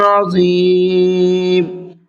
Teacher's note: ذا کو بھی منہ بھر کے پڑھنا ہے